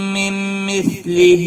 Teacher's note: لہم، میم ساکن کے بعد دوسرا میم آیا ہے، ادغام شفوی ہوگا، اور نون ساکن کے بعد بھی میم آیا ہے، یہاں پر ادغام باغنہ ہوگا